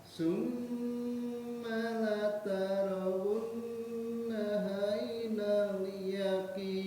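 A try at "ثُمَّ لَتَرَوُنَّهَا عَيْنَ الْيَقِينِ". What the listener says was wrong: Awas ya kedengaran summa. Summa. Bedakan walaupun tidak melihat kita ke pelafalan. Tapi kalau summa bedakan?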